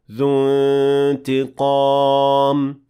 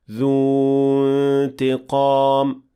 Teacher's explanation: in spite of the fact that dhu ends with a natural mad letter, we will not extend because of التقاء الساكنين. So it will be completely dropped, and we will say ذو انتقام, not ذو انتقام.